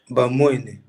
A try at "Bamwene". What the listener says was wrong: Très bien, un bon élève.